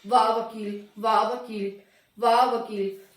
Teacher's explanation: वाह वकील, वाह वकील, वाह वकील। तो दांत और होठ दोनों का ही इसमें मिश्रण हो रहा है, दोनों ही आप एक दूसरे से टच हो रहे हैं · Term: दंतोष्ठ व्यंजन